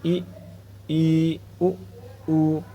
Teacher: सम्रत मुह लगभग पूरा बंद रहता है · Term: संव्रत